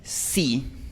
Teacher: Nosotros no tenemos en español ese ese glide, al final es solamente una i pura. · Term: i española